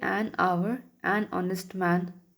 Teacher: We say an hour, an honest man, because H is silent.